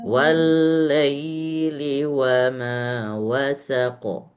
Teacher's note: Tahan ketika ada huruf lam yang bertasydid, tahan satu harokat.